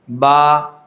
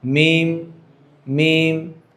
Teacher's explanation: تری مل کر با، خشکی مل کر میم